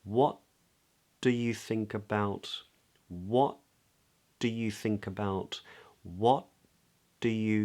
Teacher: we go to make that first sound, the T, but we don't release it. Instead, we release into the D. We do hold the tongue there.